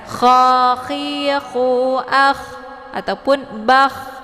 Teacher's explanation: Jadi ada suara kayak suara ngorok gitu ya, ada anginnya. · Ini kha sukun, jadi sifatnya hamas, dia letak posisinya di tenggorokan bagian atas